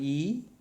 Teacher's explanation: it is a front unrounded vowel just below half close